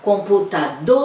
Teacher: Qual que foi a sílaba tônica? Foi o dor.